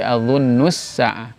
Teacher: idghamnya huruf lam sukun ke huruf sin yang asalnya adzunnul sa'ah jadi adzunnus sa'ah. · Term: idgham syamsi